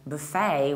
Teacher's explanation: In the American accent, we say buffet, buffet, so you shift the stress and you stress the second syllable, buffet. But you can also say buffet, reducing the first syllable, buffet.